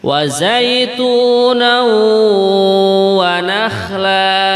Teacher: Tanwin setelahnya huruf wawu. Ini dalam tajwid namanya idgham bihunnah. Idgham yang disertai dengan dengungan gitu.